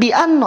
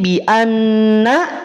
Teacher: Bukan karena ada kasrohnya, tapi karena huruf nun itu disifati oleh sifat istifal. Pangkal lidah tidak naik. Ketika pangkal lidah tidak naik, maka konsekuensi pelafalannya adalah tipis.